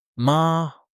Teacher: Tone one, high and steady like you're holding a note. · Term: Tone 1